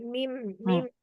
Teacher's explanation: kedua bibir jadi dengan merapatkan bibir gitu Ya keluarnya mim itu merapatkan mim mim merapatkan bibir ya Heeh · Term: syafatain